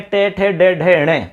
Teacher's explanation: ये सारे वर्ण मूर्धन्य हैं क्योंकि इनका स्थान मूर्धा है